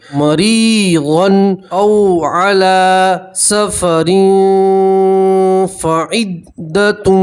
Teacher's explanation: مریغن او علی سفر فعدۃ، ٹھیک، یہاں بھی تنوین کا اکفا ہے، تنوین کی آواز کو ناک میں چھپائیں گے اور ایک الف کے برابر گننا کریں گے